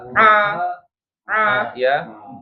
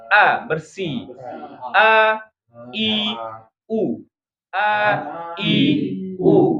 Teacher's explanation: A jangan sampai Hamzah itu ke hidung